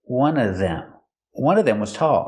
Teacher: I'm going to use the silent V sound and say one of them.